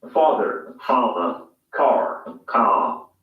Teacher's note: Notice that the final R sound is not pronounced in British English. Father ends in a simple schwa vowel, like father.